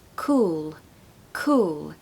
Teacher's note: we don't want an ooh sound we want all like the word all